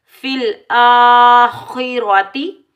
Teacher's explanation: فِي الْآخِرَةِ، کھڑا زبر کو ایک الف کی مقدار میں کھینچ کر ادا کریں گے۔ خا حروف مستعلیہ موٹا پڑھیں گے، را کے اوپر زبر آنے کی وجہ سے را کو ہم پور پڑھیں گے، موٹا پڑھیں گے